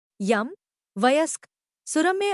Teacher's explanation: यह ध्वनि, इस ध्वनि के उच्चारण के लिए पहले तो जीभ जैसी ध्वनि के लिए तैयार होती है और फिर एक प्रकार के जैसी जहवा का मध्य भाग उठकर कठोर तालु के बहुत पास पहुंच जाता है। यह सघोष अवृत्ताकार तालव्य ध्वनि है। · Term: अर्धस्वर